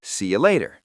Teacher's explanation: So see you becomes see ya. And later, in American English, the T often becomes that soft D sound, like later.